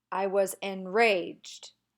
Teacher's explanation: the rage gets more emphasis than the N.